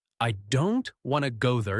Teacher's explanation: the smaller words like I, to there are said more softly or quickly